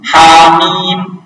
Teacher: Hamim, ha berarti hanya mat tabi'i 2 huruf, bukan 3.